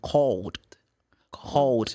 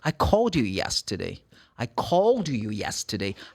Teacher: Ele vibra. Então, o ED muda. Não vai ser mais t, vai ser d.